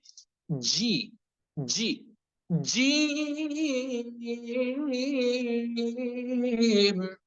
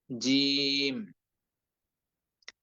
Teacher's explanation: জিহ্বার মধ্যখান থেকে আরেকটু সামনের দিকে আগিয়ে জিহ্বার যে অংশটা রয়েছে, সেই অংশটা উপরের তালুর সঙ্গে লেগে উচ্চারিত হয় · জিম অক্ষরটি উচ্চারণ করতে হয় শক্তভাবে, জিহ্বার বরাবর মধ্যখান, তার উপরে তালুর সঙ্গে লাগিয়ে খুব শক্তভাবে